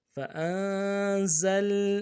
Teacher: زا کو سٹی ہوگی، لام کے ساتھ ملانا ہے اور لام میں غنہ آنی ہوگا۔